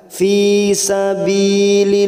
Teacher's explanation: fi kasar bertemu ya sukun 2 harokat